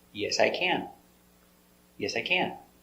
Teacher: You finish with the helper can. So, it is the important word and you give the stress to the word.